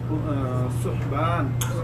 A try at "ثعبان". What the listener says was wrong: عين لابد من النطق الصحيح ثعبان لا ثعبان احسنت